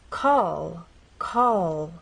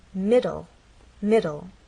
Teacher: as you finish the word the tongue does not drop down it stays pressed against that bump